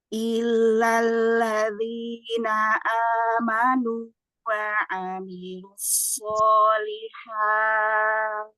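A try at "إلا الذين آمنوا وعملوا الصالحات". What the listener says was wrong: Ulang di sini. Illalladzina. Ladzina. Tipiskan. Jangan ladzi. Tak sukun di ujung. Solihat. Wa amilus.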